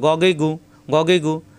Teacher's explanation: তাসদিদ আসলে দুইবার পড়তে হবে। গইন কণ্ঠনালীর শেষ অংশ থেকে গ, জবর আসলে আকার প্রকাশ পায় না।